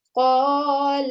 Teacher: If we were just reading the first two letters, you will say قَالَ, and we will elongate the sound of the lam for 2 seconds